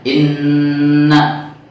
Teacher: Nah, i-nya itu di awal digusur. Harusnya langsung aja, tidak perlu ada panjang di huruf alifnya.